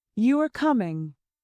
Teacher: Falling tone, this is a statement.